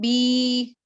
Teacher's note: یا ساکن سے پہلے زیر آ گئی تو میں اس کو پڑھتی ہوں بی، ایک الف کے برابر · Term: یا مدہ